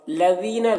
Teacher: لذین ذال کو باریک پڑھیں گے، اور یہاں پر یا مدہ ہے تو اسے ایک الف کے برابر کھینچ کر پڑھیں گے۔